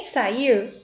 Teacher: Em sair, o I, por representar o som mais forte da sílaba, é uma vogal.